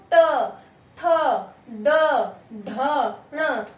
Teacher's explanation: जैसे बोल के देखो, ट, ठ, ड, ढ, ण, आपकी जो जीवा है वो ऊपर की ओर फोल्ड हो रही है और उस ऊपर वाले हिस्से को टच करके, उस ऊपर वाले हिस्से को छू करके फिर आपकी वायु निकल रही है, यानी उच्चारण कैसे हो रहा है, आपको आपकी जीवा को वो ऊपर जाकर के उस स्थान को टच करना पड़ रहा है, छूना पड़ रहा है। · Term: मूर्धन्य व्यंजन